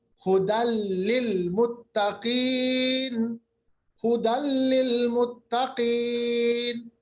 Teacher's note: दो जबर को हमने लाम के साथ मिला दिया